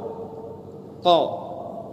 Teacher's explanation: Qaf dengan kaf di pangkal lidah, sama-sama di pangkal lidah. Dekat dengan tenggorokan tapi bukan huruf tenggorokan. Makanya tidak boleh terlalu ditekan huruf qaf.